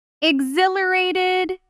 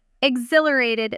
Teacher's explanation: The middle syllable carries the weight and the H is soft. U almost disappearing in fast speech. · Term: stress